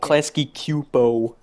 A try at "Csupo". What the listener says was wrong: it's Csupo. Yeah, it's Csupo. Well, it could be pronounced Csupo or Chupo, but it's not Supo.